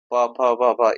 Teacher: प फ ब भ, ये तो ओष्ठ वाला है।